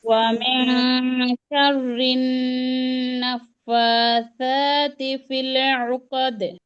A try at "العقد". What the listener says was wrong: ও কাদ না আপু, ও কদে, কফ জবর ক হয়, কা হয় না, ফিল কদে।